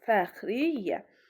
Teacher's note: Fəxriyyə sözündə isə tam əksi, yəni y-nın biri düşür.